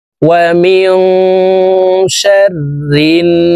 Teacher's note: তাসদীদওয়ালা নুনের সাথে নাকের বাসি থেকে গুন্নাহ করে পড়তে হবে, ওয়াজিব গুন্নাহ।